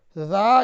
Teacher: ذال الف زبر ذا، یہ حروف مدہ ہے الف کی شکل میں. اسے ایک الف یا 2 حرکت کے برابر کھینچ کر پڑھیں گے